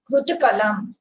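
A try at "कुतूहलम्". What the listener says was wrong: There is no Rikara here. The Fu has a Hrasva Ukara. The Tu has a Dirgha Ukara. So it is Kutuhalam.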